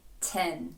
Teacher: широкої посмішки від вас не очікують це вузеньке е